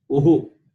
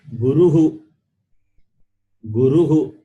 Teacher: So the Visarga takes a sound of the vowel. If the letter is U, uhu.